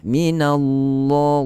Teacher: Huruf lam ini dibaca tebal pada kalimah lafzul jalalah sahaja, dengan syarat sebelum ni berbaris di atas dan baris hadapan.